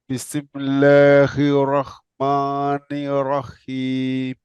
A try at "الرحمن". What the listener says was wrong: Yeah, and don't say ma. Rahmani. Could you say ma lighter?